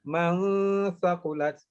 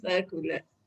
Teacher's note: Dia kat ujung lidah aja. Lidah tu kat ujung gigi kita tu keluar sikit.